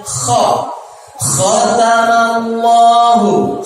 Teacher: Dia kha terdengar bunyi oh karena saya angkat rahang saya.